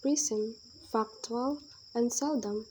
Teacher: the words prism factual and seldom receive the primary stress on the first syllable